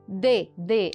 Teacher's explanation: ela tem a oclusão tem o fechamento ela está no mesmo lugar de articulação que o t